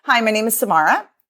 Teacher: upspeak is that Rising inflection at the end which makes can make everything sound like a question exactly so